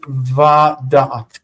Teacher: this syllable, the ve, comes right before the tone. Right before the tone. If it's right before the tone, it will often lengthen.